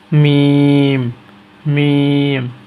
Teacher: মিম দুই ঠোট এক করতে হবে